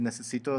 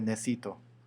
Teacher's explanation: cuando se encuentra un vocal entre dos consonantes y entonces se elimina por completo el vocal. Entonces, por ejemplo, en vez de decir necesito, se diría necesito. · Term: debilitación vocálica